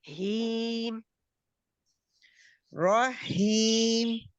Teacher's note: ہی کے لیے آپ موٹا نہیں اس کو کریں، زبان کی جڑ پیچھے سے نہیں اٹھانی